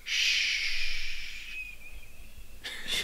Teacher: The tongue is in the center of your mouth and the air is kind of flowing right over the top.